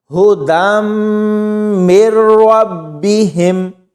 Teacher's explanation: اس یا کو نہیں پڑھنا کیونکہ یہ یا خالی ہے، تو یہاں پر اس نون کو نہیں پڑھنا کیونکہ یہ نون ساکن ہے اور اس کے بعد مشدد حرف ہے